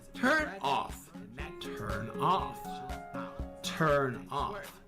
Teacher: the N in turn merges directly into the O of off making it turn off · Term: merging